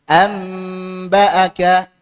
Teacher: membaca iqlab adalah dengan menempelkan kedua bibir Tana utkan bidunil kaz alq bidunil kaz yaitu nempel tanpa dikerutkan